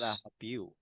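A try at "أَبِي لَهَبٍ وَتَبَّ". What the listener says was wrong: Lahabiu. Nah, di sini kasrotain bertemu dengan waw sehingga dibaca dengung ya karena idgham bigunnah. Dengungnya kurang, Mas, maaf.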